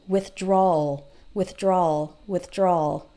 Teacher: you almost don't hear the W